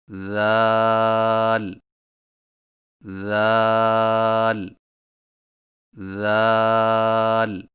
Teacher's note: ذال کی ادائیگی میں زبان کی نوک کو سامنے والے اوپر کے دو دانتوں کے اندرونی کناروں سے نرمی سے لگا کر باریک آواز میں پڑھیں